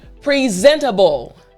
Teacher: Notice how when I say it fast, the T sounds like a D. If I say it slowly, the T sounds like a T.